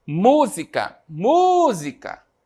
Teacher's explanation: a primeira música demora mais a sair então a sílaba tônica aí é o mu